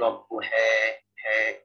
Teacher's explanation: Jadi e-nya tuh tidak seperti e kubro, tapi dia lebih pertengahan. Ya, bunyinya antara imal kubro dengan kasrah. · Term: taklil